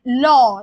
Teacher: জীভের উভয় পাশ থেকে এই বর্ণ উচ্চারণের সময় বায়ু নির্গত হয় তাকে আমরা বলছি পার্শ্ববিক বর্ণ তাকে আমরা বলছি পার্শ্ববিক বর্ণ আচ্ছা · পার্শ্বিক হচ্ছে আমরা যখন ল উচ্চারণ করি, দেখবে যে আমাদের ল, দেখো যখন জিভটা সামনের দিকে এগিয়ে আসছে, জিভের দুই পাশ থেকে, জিভের উভয় পাশ থেকে বায়ু নির্গত হয় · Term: পার্শ্বিক বর্ণ